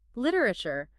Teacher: the T often softens. It gets closer to a quick D